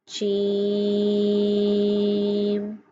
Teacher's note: جیم کو 3 الف کی مقدار کے برابر لمبا کریں گے، کیونکہ اس کے اوپر مد ہے۔ جیم۔ جبکہ باقی حروفوں کو ہم نے 1 الف کی مقدار کے برابر لمبا کیا ہے۔